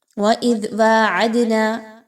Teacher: وَإِذْ وَاعَدْنَا، زال کو نرمی کے ساتھ پڑھیے، سختی کے ساتھ، زا کی طرح نہیں پڑھنا، بلکہ زبان کو تھوڑا سا باہر نکالیے، دانتوں کے درمیان میں دیجئے